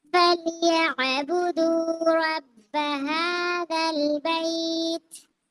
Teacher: پڑھیں گے، تا ساکن کر لیں گے، حروف حمس بھی ہے، تا ساکن کرتے ہوئے ہمس یعنی ہوا جاری کریں گے